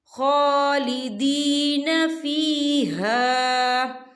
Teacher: خا کے پر کھڑی حرکات ہے، تو ہم یہاں 2 یا 3 حرکت کے برابر کھینچیں گے